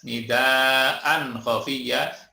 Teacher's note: tanwin bertemu dengan kha, ini disebut idhar halqi, dibaca jelas